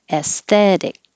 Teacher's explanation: And the T will change to a D.